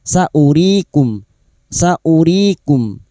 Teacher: wawu tidak berfungsi sebagai mat ya, maka hamzah ini dibaca pendek